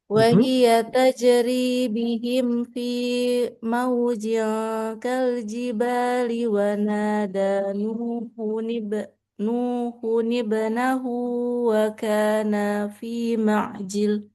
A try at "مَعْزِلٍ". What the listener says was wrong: Zil, jangan jil. Zil.